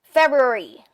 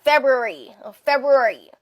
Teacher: Ang stress po ay nasa first syllable na Feb.